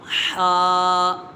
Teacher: حا، یہ حرف حلقیہ ہے، اس کا مخرج ہے حلق کے درمیان والے حصے سے ادا ہوتا ہے